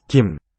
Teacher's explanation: It'll be lightly aspirated word initially